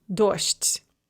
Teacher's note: So that soft de at the end is going to be pronounced as a te, and then it's going to devoice the zh as well, which will become a sh. So dojd becomes dosht.